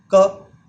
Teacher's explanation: क को बोलते समय जीभ का जो पीछे वाला भाग है, यानी कि जो जीभ का लास्ट वाला हिस्सा है, वो कहाँ टच होता है? कंठ, यानी कि गले को।